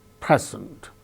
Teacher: Present, the first syllable gains stress, present.